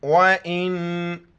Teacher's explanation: وَإِن كُنتُمْ عَلَى سَفَرٍ وَلَمْ، نون ساکن ہے، ناک میں آواز پیدا کرنی ہے، دونوں جگہوں پر نون ساکن ہے، یعنی اس پر کوئی زبر زیر پیش نہیں ہے، ناک میں آواز پیدا کریں گے اور حمزہ کو نون کے ساتھ ملائیں گے۔ الف کے اوپر زبر زیر پیش ہو تو وہ حمزہ پڑھی جاتی ہیں۔